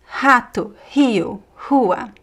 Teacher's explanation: the most common pronunciation is here from the throat, right? It's a h, similar to the h in American English, uh but could also be similar to the French r, a little bit more stronger. · at the beginning of a word, the r is pronounced as h